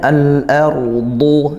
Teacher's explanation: Huruf tebal dia istil dan itbaq naik pangkal lidahnya dan juga tertutup rongga mulutnya karena tebalnya huruf dod.